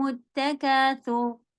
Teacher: سا زبان کی نوک سے اور را کو ہیوی